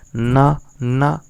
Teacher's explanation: ना आपका दंत भी उपयोग में आ रहा है और नासिका भी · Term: पंचमाक्षर